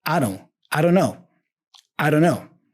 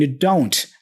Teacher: in regular speech we usually reduce don't to don't without the T like I don't know or even more like a I don't